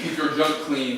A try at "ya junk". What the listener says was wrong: First of all, it's pronounced ya junk, not your junk, but yes.